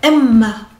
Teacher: pour Emma, il y a un double M et on va un petit peu s'arrêter sur le M